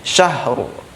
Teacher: Ada bunyi ha sukun, kemudian ada ro sukun dalam satu bunyi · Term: ro sukun tebal